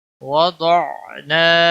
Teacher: واو زبر و، ضاد عین زبر ضع، نون الف زبر نا، وضعنا، ضاد پور پڑا جائے گا اور یہاں پر الف مدہ ہے، ایک الف کے برابر اس کو کھینچنا ہے